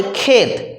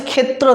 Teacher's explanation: প্রথমটা ঠিক আছে তারপরেরটা দ্বিতীয়টা বদলে গেছে বলে এটাও হচ্ছে প্রগত স্বরসঙ্গতি তারপরে ক্ষেত এই শব্দটা আসছে ক্ষেত্র থেকে ক্ষেত্রের ক্ষেত্রে তফালা ত যুক্ত র ত যুক্ত র এর ক্ষেত্রে রটা দেখো বাদ গিয়ে শুধু হয়েছে ক্ষেত